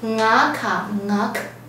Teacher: 他声音呢从二声变成入声 ，为什么呢？因为他的机子是二声，遇到